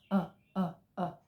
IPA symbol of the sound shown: ʌ